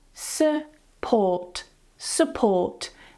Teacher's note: The stress goes on the second syllable, so the first one, because it's unstressed, because it's weak, it has a schwa.